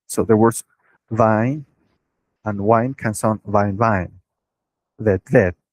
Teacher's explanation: V and we sounds are used interchangeably. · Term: interchangeability of V and we